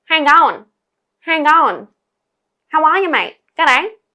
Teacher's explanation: add this nasal sort of sound. It means speaking through your nose. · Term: nasality